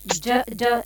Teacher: Jim is pronounced on our middle of the tongue